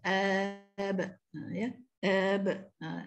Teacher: bagi ba dia tidak sekuat qalqalah qaf dengan ta ya. Dia sikit je. ba dengan dal ni sikit je.